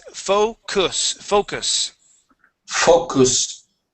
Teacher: that U is more of an uh sound